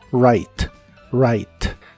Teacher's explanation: una palabra de inglés empieza con wu seguida de r normalmente no se pronuncia la W Así que en este caso es right como si tuviera una a antes de la i y la e del final no se pronuncia solo right write